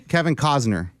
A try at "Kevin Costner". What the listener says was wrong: Cosner? Isn't there a T in there somewhere?